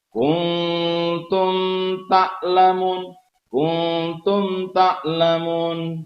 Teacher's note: Cara membacanya adalah bunyinya mem, bunyi mem disuarakan dengan terang dan jelas tanpa berdengung di bibir dengan mulut tertutup. Nah, idhar itu artinya kan terang, idhar itu artinya jelas. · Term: izhar syafawi